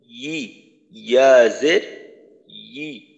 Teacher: জিহ্বার মধ্যখান উপরের তালুর সঙ্গে লাগিয়ে তারপর উচ্চারণ করতে হবে ই, ইয়া জের ই।